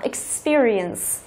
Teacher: trọng âm chính của từ sẽ rơi vào âm thứ hai. Đó, experience.